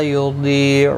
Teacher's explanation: ضاد حروف مستعلیہ ہے، پر پڑا جائے گا. ضی یا مدہ بھی ہے، ایک الف کی مقدار کے برابر کھینچ کر پڑھیں گے.